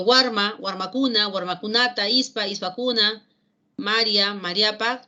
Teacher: son palabras que reciben el acento siempre en la penúltima sílaba. Y vamos a decir que todas son graves.